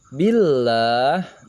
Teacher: Nah, ini kita bertemu dengan lam lafzul jalalah, lafaz Allah, dibaca tipis atau tarqiq karena lafaz Allah sebelumnya ada huruf yang berharokat kasroh. Billah, tidak dibaca billah tapi billah.